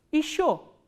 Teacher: The next word from sh we are going to learn is ye, sh, yo. Again this ye unstressed, ye will be pronounced as e, not ye.